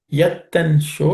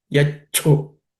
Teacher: Yat and sho become yacho. The sho becomes cho, and it becomes ich.